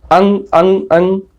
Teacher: अंग जो होता है, अंग यानी अनुस्वार, इसमें नाक से अधिक वायु निकलती है और मुख से कम निकलती है